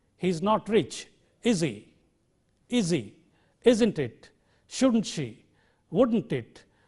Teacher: the speaker should cultivate the habit of using a falling tone on question tags